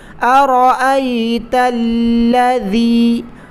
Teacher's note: تا کو لام کے ساتھ ملا کر سختی کے ساتھ ادا کریں۔ ارأیت الذی، ذال کو زبان کی نوک دانتوں سے باہر نکال کر پڑھنا لازم ہے، اس کو لذی پڑھنا بالکل غلط ہے۔